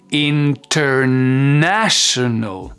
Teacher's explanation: elle est devenue un peu plus aigu sur le NA